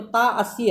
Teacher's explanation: तो आदि का मतलब जहाँ पूर्व में, तो ता अस्य, ता प्लस अस्य में पूर्व में दीर्घ हो गया, इसीलिए यह वत्सानुसारिणी विवृति है। तो ता अस्य इसका उदाहरण हो गया वत्सानुसारिणी का।